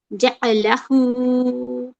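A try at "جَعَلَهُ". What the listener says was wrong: आइन का जबर साफ, जा, जा,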